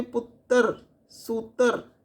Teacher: ਦੁੱਤ ਅੱਖਰਾਂ ਵਿੱਚ ਰਾਰੇ ਨੂੰ ਸਥਿਰ ਰੱਖਣਾ ਮਾਝੀ ਉਪਭਾਸ਼ਾ ਦੀ ਵਿਸ਼ੇਸ਼ਤਾ ਹੈ